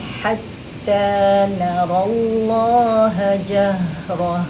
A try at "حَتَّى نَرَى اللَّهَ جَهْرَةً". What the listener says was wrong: Okay, dekat Allah agak bagi lagi space untuk syaddahkan.